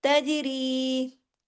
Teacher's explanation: जीम पे कलकला हो गया